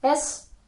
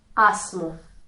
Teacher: in the word es we have the narrow e, and in esmu the sound is wide